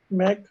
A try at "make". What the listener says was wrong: It's make. saying Mac. It's not Mac. Make. A sound.